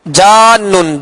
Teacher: جیم کو نون سے ملانا ہے مگر مد کر کے ملانا ہے، یہاں بیچ میں حمزہ نہ آئے، جیسے جان نہیں پڑھیں گے. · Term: مد لازم